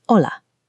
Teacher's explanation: And the letter H makes no sound at all.